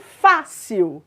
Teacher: em fácil a sílaba tônica é a penúltima palavra paroxítona por isso plural de fácil é fáceis barril roubar